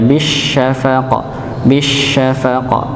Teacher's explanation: Bukan bisyafaq dengan sin tapi dengan syin yaitu letaknya di mana? Di tengah lidah. ya. Sebagaimana tempatnya sama dengan huruf jim dan ya.